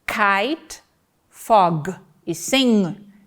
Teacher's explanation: são produzidas com a parte posterior da língua como articulador ativo, posicionando-se contra o velatino, que é o articulador passivo. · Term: consoantes velares